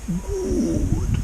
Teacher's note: He's elongating this ooh sound in good.